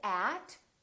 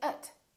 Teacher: the vowels inside those words can sound really short and they sound like uh so we don't say at we say ut we don't say